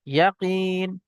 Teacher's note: ইয়াকিন, ইয়া জাবার ইয়া, কফ ইয়া জের কি, নুন জের নি। ইয়া সাকিনের পূর্বে কফের নিচে এখানে জের এসছে, ইয়া মাদ্দা এক আলিফ পরিমাণ টান দিয়ে পড়তে হবে